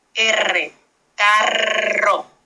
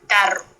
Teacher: pero la vibrante múltiple vibra varias veces como tal